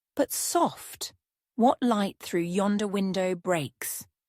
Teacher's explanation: the syllables alternate between being unstressed and stressed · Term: iambic pentameter